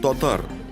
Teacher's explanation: «а» в начале слова произносится со свернутыми в трубочку губами. Получается «о».